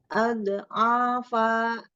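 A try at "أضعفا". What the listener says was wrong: Jangan dot ya. Jangan dipantul. Al-afa. Al-afa.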